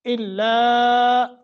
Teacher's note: مد منفصل ہے، دو الف کے برابر کھینچ لیں